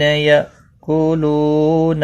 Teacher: یا حمزہ ساکن کو جھٹکے کے ساتھ پڑھا جائے گا